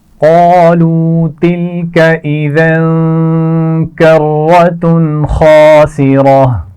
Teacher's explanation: قاف کو موٹا پڑھا جائے گا اور اس میں واو مدہ بھی ہے